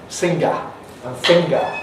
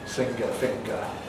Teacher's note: for someone from Liverpool, for example, you have singer and finger, and they rhyme perfectly